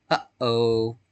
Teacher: that sound where you catch your breath between the up and the O that's a glottal stop